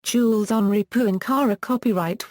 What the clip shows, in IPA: ʒyl ɑ̃ʁi pwɛ̃kaʁe